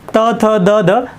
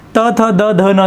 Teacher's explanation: जे वर्ण उच्चारताना आपल्या जिभेचे टोक दाताच्या मागच्या बाजूस टेकते आणि ज्या वर्णांचा उच्चार होतो त्याला म्हणायच आपल्याला दंत वर्ण मग